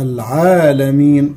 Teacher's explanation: ألف صغيرة بعد العين في العالمين تمد بمقدار حركتين